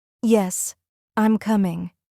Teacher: When they are confident, sure, or giving information, the voice usually falls. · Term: Falling